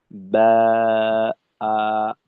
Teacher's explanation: জিউভাটা একেবারেই নিচু রেখে ঠোটটাকে যথেষ্ট খোলা রেখে তারপর আলিফের মাদের উচ্চারণটা করবো।